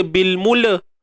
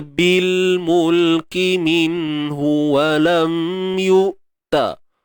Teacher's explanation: huruf lam ni ada sifat tawassut dia. Suara ni tak boleh terlepas sangat, tak boleh tertahan.